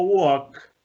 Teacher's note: cuando yo digo walk, ese k final no me hace vibrar las cuerdas. Por eso, al ponerle ed suena como t, suena una t al final.